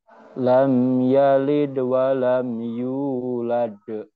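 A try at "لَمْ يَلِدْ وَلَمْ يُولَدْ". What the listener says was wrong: Masih tertekan. Yulade. U-nya kepanjangan, Pak.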